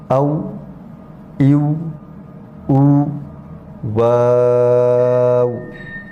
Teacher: دونوں ہونٹوں کے ناتمام ملنے سے واو ادا ہوتا ہے، یعنی ہونٹوں کو گول کرنے سے واو ادا ہوتا ہے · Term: حرف واو